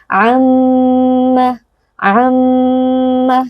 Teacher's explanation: ke dalam rongga hidung dan wajib ditahan sebentar am am ya harus masuk ke dalam hidung ditahan sebentar tidak boleh langsung dibaca · Bismillahirrahmanirrahim di sini terdapat mim bertasdid yang berlaku hukum wajibul gunah wajib digunahkan atau didengungkan dengan bunyi dengung yang masuk ke dalam kisyum atau ke dalam rongga hidung dan wajib ditahan sebentar am am ya harus masuk ke dalam hidung ditahan sebentar tidak